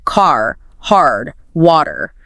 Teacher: Americans pronounce the R very clearly, especially at the end of words like car, hard, water